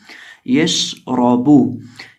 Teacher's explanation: रॉ को मोटा करके पढ़ेंगे क्योंकि रॉ के ऊपर जबर है और बा को पढ़ते वक्त होंठों को गोल करेंगे।